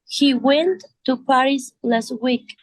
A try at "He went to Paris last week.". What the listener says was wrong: Pronúnciame la T de went. He went to Paris last week. Siempre las consonantes fuertes, joven, cuando se observen como la T, la P y la K, y también la C, se deben pronunciar si van al final, ¿ok?